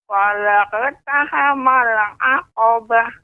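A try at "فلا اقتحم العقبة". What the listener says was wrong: Ya, tapi ini qafnya masih tipis ya, falaq. Namun ini masih tipis, falaq. Yang benar falaqu. Lebih dinaikkan lagi, falaqtahamal.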